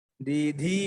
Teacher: ది మొట్టమొదటి అల్పప్రాణం, తర్వాత మహాప్రాణం